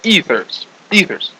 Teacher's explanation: so this is like a a long e here ethers and the stress would be on the first syllable